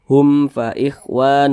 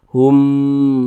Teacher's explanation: Fa bukan huruf ba bukan huruf mim ya hukumnya izhar syafawi dibaca jelas tidak berdengung jadi dibaca pendek saja